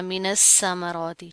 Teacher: اس طرح نہیں کرنا، سا کی ادائیگی کریں گے پراپر طریقے سے، نرم حروف میں سے ہے، را کے اوپر کھڑا زبر آ رہا ہے، ایک الف کے برابر پڑھا جائے گا اور موٹا پڑھا جائے گا